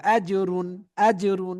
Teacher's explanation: তানবিনের পর এজের হরফ গইন এসেছে তাই আমরা গুন্না ছাড়া স্পষ্ট করে পড়বো অর্থাৎ ইজহার করে পড়বো আজরুন আজরুন হয়ে গেল গইন ইয়া জবর